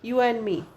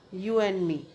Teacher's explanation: एन ड नहीं होता, डिलीट हो जाता है ड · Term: डिलीशन